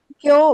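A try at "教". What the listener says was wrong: it is not kyo. It is elongation. Kyo.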